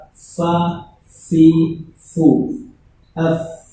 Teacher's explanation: ketika ketemu huruf fa ya harus ada hamsnya, keluar nafasnya